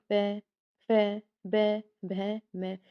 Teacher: प वर्ग के अंतर्गत कौन से आते हैं, प, फ, ब, भ, म। और इनका उच्चारण स्थान कौन सा है, ओष्ठ्य, मतलब कि होठ